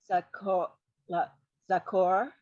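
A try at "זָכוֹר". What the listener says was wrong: Zachor. It's a more of a ch, yeah.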